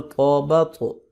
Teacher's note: طا پہ ہم قلقلہ کر رہے ہیں، یعنی کہ اس کو ہلا کے پڑھتے ہیں